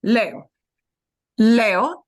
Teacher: the E is going to get a little bit harder punch than that second syllable